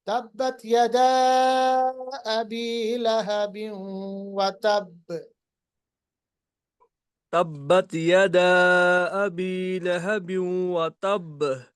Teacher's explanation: थोड़ा सा बा पे देरी करके आगे पढ़ना